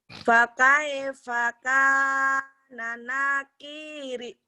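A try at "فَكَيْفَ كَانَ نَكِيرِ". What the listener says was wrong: Nanya pendek. Kana nakiri. Kana nakiri. Nanya telat. Lebih cepat.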